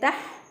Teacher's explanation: हा जो है तह, हा को बस्ते हलक से अदा किया